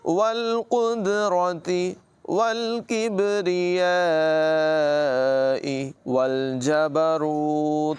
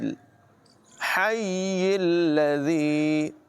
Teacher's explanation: ہا کی آواز نمایاں کریں گے، ہا کو یا سے اور پھر یا کو لام سے ملائیں گے۔